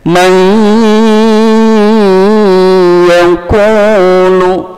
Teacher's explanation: memasukkan nun sukun kepada huruf ya, maka didengungkan juga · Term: idgham bi gunnah